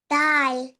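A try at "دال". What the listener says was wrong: जी, खींच कर बोलें. स्ट्रेच. दाल.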